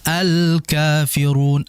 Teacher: Al di situ kan lamnya jelas ya maka disebut dengan al-qamariyah karena memang al-nya jelas.